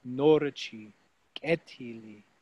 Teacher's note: Again, we have two words which will both have the stress on the first syllable.